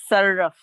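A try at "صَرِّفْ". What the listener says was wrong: sarrif. Yes, because sarrafa, yusarrifu, the ra had a kasra.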